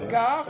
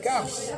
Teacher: ils le disent, ils disent car et cars. On entend le S.